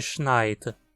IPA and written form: ʃnaɪ̯tə (schneit)